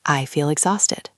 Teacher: Listen to the phrase, I feel exhausted. When we speak naturally, the L sound in feel and the E sound in exhausted flow together.